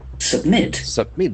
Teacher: There are two syllables, accent force on the second.